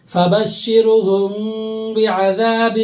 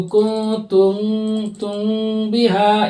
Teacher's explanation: اخفاء شفوی میں کیا ہوگا؟ غنہ کے ساتھ اخفاء ہوگا